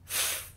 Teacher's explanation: front of your throat when you make the letter F sound you should not feel a vibration when you make the sound because you do not use your voice box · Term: continuous sound